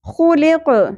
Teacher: خا پر حرف ہے اس کے ساتھ ساتھ خرد حرف ہے خراش کا ایلیمنٹ کلیئر ہونا چاہیے · وقف کی صورت میں قوف ساکن پہ قلقلہ بھی ہوگا مخرج سے ہلانا بھی ہے · और ख़ौ पुर हर्फ है, इसके साथ साथ खुरदरा हर्फ है, खराश का एलिमेंट क्लियर होना चाहिए